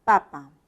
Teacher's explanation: La M es un fonema sonoro porque hay vibración de las cuerdas vocálicas. En cambio, cuando articulamos la P, no vamos a efectuar ninguna vibración, por eso le decimos sordo